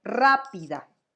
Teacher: Es esdrújula porque la sílaba tónica está en la antepenúltima sílaba